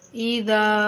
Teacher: دال کو کھینچیں گے الف اس کے بعد آنے کی وجہ سے